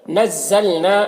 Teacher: ولو، یہاں پر واو لین ہے، اسے نرم آواز کے ساتھ جلد پڑھیں گے۔ نزلنا، نا میں الف مدہ ہے، اسے ایک الف کے برابر کھینچیں گے